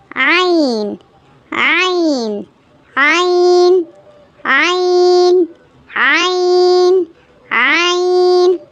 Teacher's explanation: இது பாத்தீங்கன்னா மிடில் அதாவது தொண்டையினுடைய நடுப்பகுதியில இருந்து வரக்கூடிய லெட்டர்.